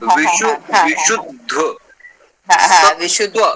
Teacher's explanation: तो सु पे थोड़ा सा बलाघात किया जाता है